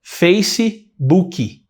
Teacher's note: A gente põe um I no final de face. A gente não termina com esse sonzinho de S, né?